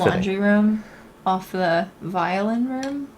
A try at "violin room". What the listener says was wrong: You did, on the wrong syllable. On the violin room? And the violin room?